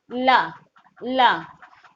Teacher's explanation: अब ला का भी बोल के देखिए, ला, तो आपकी जो जीवा होती है वो कहाँ पास होती है, मसूड़े के पास होती है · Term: वर्तस्य